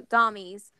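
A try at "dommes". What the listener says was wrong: It sounds a lot like dummy. It's actually French for female dom. It's just dom. Silent.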